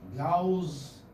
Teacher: You do not have a sa sound here. You have za sound here.